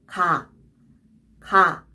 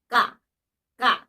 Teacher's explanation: To release less air, the vocal cords are tense, which is not actually visible, but you can definitely feel yourself. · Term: ga sound